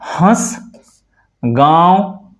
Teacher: नाक और मुख दोनों से उच्चारण हो रहा है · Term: अनुनासिक